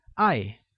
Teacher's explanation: is pronounced using a falling tone